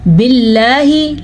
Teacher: बिल्लाही लफ्ज़ अल्लाह को बारीक पढ़ेंगे, पीछे वाले हर्फ नीचे ज़ेर आने की वजह से।